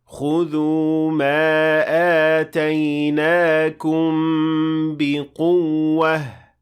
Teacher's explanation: You have to show the stress on the waw by showing that there are 2 waws in this case.